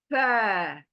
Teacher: ऊपर के दांत का किनारा जो है ना मेरे होठों के गीले हिस्से को टच कर कर ये लेटर आएगा